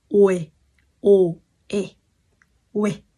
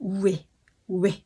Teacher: Kéo nhanh từ chữ O sang chữ E là nó ra thôi